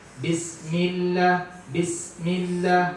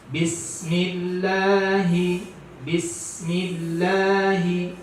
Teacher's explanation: huruf sin itu dia tidak boleh habis cepat karena dia ada hurufnya hams, sifatnya hams. Jadi agak diaderkan dia.